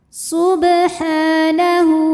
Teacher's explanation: Ada hukum qalqalah sughra karena ada huruf ba yang sukunnya sukun asli dan ada di tengah bacaan. Cara membacanya dipantulkan dengan pantulan yang kecil. Ha ada hukum mad tabi'i muqaddar karena ada huruf ha yang berbaris fathah panjang.